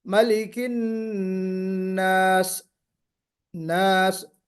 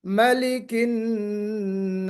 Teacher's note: تو اس میں سیٹی تو بجی، تو ایک صفت ادا ہو گئی سیٹی بجنے سے